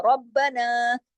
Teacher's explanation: را موٹا اور با کے ساتھ سختی سے جڑے گا، ربنا. پھر دیکھیے تقبل، تقبل کاف موٹا اور با سے سختی سے جڑے گا، تقبل منا، نون پہ تشدید ہے، منا غنہ ہوگا.